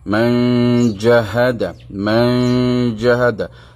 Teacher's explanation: Hukum ikhfa hakiki adalah dengung dengan kadar dua harakat.